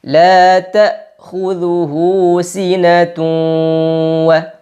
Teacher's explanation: Sinatun wa, tanwinnya dileburkan dan disertai dengan gunnah 2 harokat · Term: idgham bi gunnah